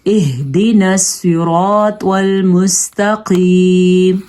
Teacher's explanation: سواد پر پڑھا ہے، را کو ہم نے پر پڑھا ہے اور الف مدہ تھا اور کھینچ کے پڑھا ہے